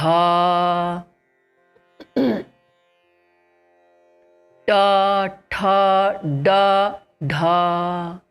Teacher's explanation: now see t d da d t du da same thing first and third are throwing less air second and fourth more air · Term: retroflexes